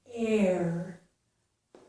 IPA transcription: eəɹ